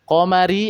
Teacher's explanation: ada ro yang berharokat kasroh, maka dibacanya tarqiq atau tipis karena ada ro yang berharokat kasroh.